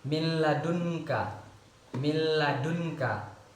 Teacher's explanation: Dengan membacanya tidak perlu didengungkan, jadi dengan tanpa dengung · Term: idgham bila gunnah